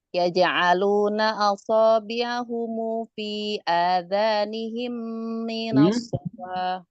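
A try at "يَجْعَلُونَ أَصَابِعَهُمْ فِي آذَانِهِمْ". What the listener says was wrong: Adhanihim apa sukun? Sama dong. Asabi'ahumu adhanihimu sama.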